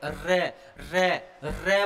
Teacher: रे बोलेंगे तो जीभ में कंपन होगा बेटा जी, जीभ में कंपन होगा। और ऐसे लगा कर जीभ पर कोई चीज रखी और हमने लुढ़का दिया है, रे, रे। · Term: लुंठित